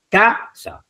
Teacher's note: ¿Dónde está la palabra o la sílaba tónica? En la penúltima